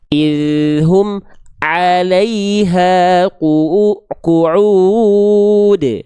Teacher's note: karena pengin dapatin huruf ainnya, mim sukunya diputus